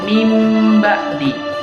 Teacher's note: seolah-olah huruf nun matinya itu diganti dengan huruf mim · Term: iklab